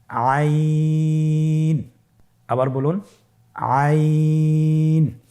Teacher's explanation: আইন হরফটি কণ্ঠনালীর মধ্যখান থেকে উচ্চারিত হয়।